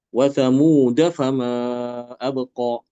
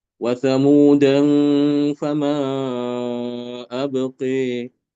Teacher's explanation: Wa thamuda fama abqa, itu bacaan Imam Hafiz ya. Untuk Imam Al-Kisai karena lafaz thamuda ada tanwinnya sehingga dia harus dibaca dengan ikhfa.